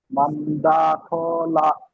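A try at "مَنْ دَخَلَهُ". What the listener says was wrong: দা টান হচ্ছে কেন? মান দা খ, দা খ। না হলো না, হা উল্টা পেশ হুম মান দাখালাহু।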